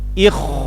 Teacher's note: Nah ini tipis karena kha sukun datang setelah kasroh. Sekarang kha sukun datang setelah kasroh tapi ada nuqtoh, berarti kita tebalkan ya